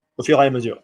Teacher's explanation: go vowel to vowel, back to back, it's known as a hiatus